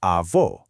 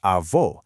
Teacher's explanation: specifically using a closed o sound, kind of like oh · utilizing an open o sound, sounding much more like aw. The spelling is nearly identical, save for the accent marks, but the openness of that final vowel is the sole indicator of whether you're addressing your grandmother or your grandfather. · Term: vowel openness